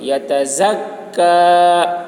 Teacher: کاف کی آواز باریک ہوگی